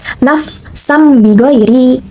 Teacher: suara nun mati atau tanwin dirubah yang asalnya berhuruf dibacanya tuh n dan ini menjadi m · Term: iklab